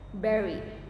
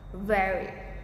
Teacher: For b, press your lips firmly together, like berry. But for v, like touch your top teeth to your bottom lip, like very.